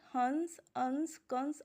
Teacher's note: अनुस्वार जो होता है वो हमारा नाक से बोला जाता है।